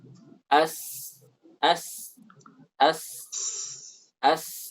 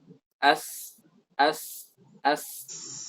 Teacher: itu posisi lidah itu seperti dekat dengan permukaan dalam gigi seri bawah.